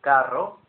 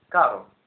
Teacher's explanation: The Double R is rolled much more than the single R